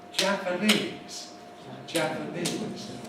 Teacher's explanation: Whenever we have a word that has more than one stress in it, followed by another word with a stress that is strong. So the word Japanese, for example, it's actually double stressed.